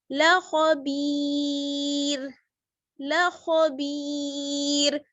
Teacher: یہاں پر دیکھیے را ساکن اور یا بھی ساکن اور اس سے پہلے با پر زیر، تو یہاں پر جو ہے اس کو باریک پڑھیں گے، ٹھیک ہے، را کو باریک پڑھیں گے